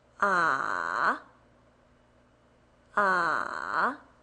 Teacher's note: Third tone, starts low and then goes up.